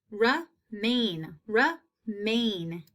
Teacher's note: i hear that long a in that second syllable